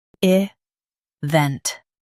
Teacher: Stress vent and keep light.